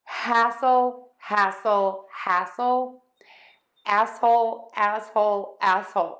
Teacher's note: you're just going to have that wide open ah and then move to the S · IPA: /ˈhæsəl/